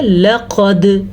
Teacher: لقد، لام زبر لا، قاف زبر دال، قد، ٹھیک ہے۔ لقد، قاف موٹا ہے، دال پہ کلکلا ہو رہا ہے۔ دال پہ جب بھی ساکن آئے اس کے ساتھ 4 حروف اور بھی ہیں، 5واں یہ ہے تو وہاں پہ جھٹکا ہوتا ہے، اس جھٹکے کو کلکلا کہتے ہیں۔